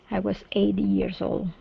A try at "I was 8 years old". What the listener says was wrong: Okay, so use the stop T there. Instead of 8 years, it's 8 years. So we want to stop the sound. 8 years.